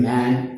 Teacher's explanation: A, vowel in man, that is front, open, unrounded.